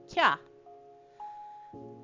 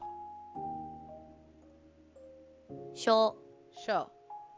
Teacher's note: the two syllables fuse together and turn into a shorter version. From the two syllables of ki and ya, they come together to make the sound kya. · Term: contracted sounds